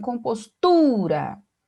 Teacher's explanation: o tu é a sílaba mais forte, né, pronunciada com maior intensidade. Então, a sílaba tônica.